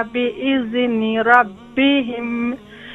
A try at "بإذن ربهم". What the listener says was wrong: بإذن. Don't do قلقلة on the ذال. Make soft and control. بإذن ربهم.